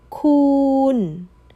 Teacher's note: Long. You held that vowel out nice and long.